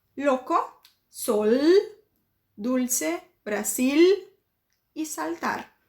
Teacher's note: Em espanhol, eu não posso fazer isso. Ele tem que ter som de L, então eu vou ter que puxar esse L no final das palavras